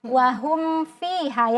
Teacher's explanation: Kalau mim dia bibir atas dengan bibir bawah atau syafatain.